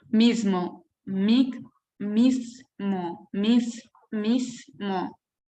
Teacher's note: Seguimos con la S, que sonaría como una Z antes del fonema sonoro.